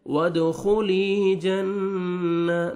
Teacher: या मद्दा ये लाम को अपने 1 सेकंड खींचना है। वदखुली जन्ना, नून मुशद्दद है, गुन्ना करेंगे।